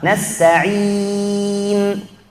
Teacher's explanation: Nasta'in harus mad 'arid lisukun, madnya harus sampai ujung, posisi lidah kita tidak berubah sampai masuk nun, harus stabil